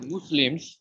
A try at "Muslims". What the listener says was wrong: মাজলিমস, মাজলিমস, M U S, S এর উচ্চারণটা ব্রাজিলের জেড এর মতো হবে। মাজলিমস।